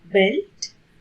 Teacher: could see the vibration of vocal cards in this video and this voiced bilabial oral sound occurs initially as in the word belt